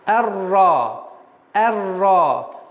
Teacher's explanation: Обратите внимание, с фатха переходим сразу на букву Ра, так как буква Ра является солнечным звуком и твердый звук